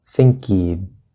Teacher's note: Think. Then the K from think is actually going to move over to he. It's going to erase the H.